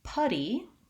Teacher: the vowel that sounds like uh it's called vowel schwa and in this case it's a stressed schwa · Finally, putty, I have a schwa sound, and this is similar to how I would pronounce the word buddy.